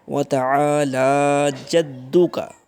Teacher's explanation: عین کے ساتھ الف ہے، لام کے اوپر پھر کھڑی زبر ہے، تو دونوں کو لمبا تھوڑا سا کریں گے۔